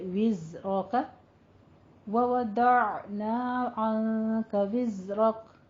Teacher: زا کے پہلے کسرہ ہے, تھوڑا سا سیٹی کی آواز کے ساتھ اس کو پڑھیں گے